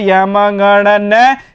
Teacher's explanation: अनुनासिक भी है क्योंकि इनका उच्चारण मुख के साथ नासिका से भी होता है यह जो पांच वर्ण है उनका उच्चारण नासिका के माध्यम से